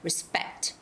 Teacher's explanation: This is a second syllable stress. Respect. And lastly, the word studio.